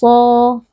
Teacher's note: karena ada alif yang didahului fathah, dipanjangkan dengan dua harakat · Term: Mad Thabi'i